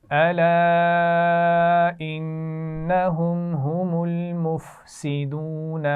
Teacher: انہم کے نون پر غنہ ہوگا